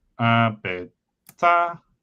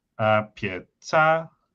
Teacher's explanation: is distinct based on palatalization of the P. So the distinction between apeta versus apieta is like meaningful, and there's like some like lexical distinctions as well.